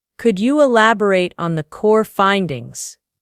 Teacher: Practice the polite rising intonation on the question.